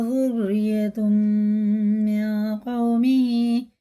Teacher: تنوین کے بعد میم پہ شد ہے تو غنہ کر کے پڑھیں گے · یہ نون ساکن کے بعد قاف آ رہا تو یہ ہے اخفا اور غنہ کر کے پڑھیں گے، اس نون کو ناک میں لے جا کے ایک الف کے برابر کھینچ کے پڑھیں گے، سائلنٹ کر کے پڑھیں گے اسے۔ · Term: ادغام میم